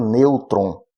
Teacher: E o acento circunflexo é aquele que alguns chamam de chapeuzinho, que nós vamos encontrar, como, por exemplo, na palavra nêutron, o acento em ne, que de certa forma é um som fechado